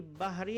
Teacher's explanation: Ha makhrajnya daripada khalqum bagian Tengah.